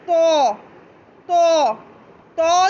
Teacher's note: तो की अदायगी मोटी करके होगी और नाक में आवाज़ नहीं जाएगी। ठीक है, तो नहीं करना है इसे, अगर नाक में आवाज़ गई तो मखरज गलत हो गया।